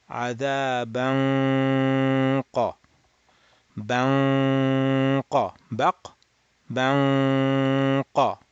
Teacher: So your nasal sound is happening when your tongue is sitting on the qaf makhraj. · being at the qaf makhraj, nasalize it, leaving your back of the tongue at the qaf. Open the nasal cavity, let air flow for 2 harakat. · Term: nasalized the qaf